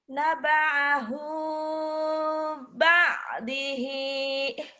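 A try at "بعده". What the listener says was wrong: Ba'da bukan ba'di. Bukan ba'di, ba'da.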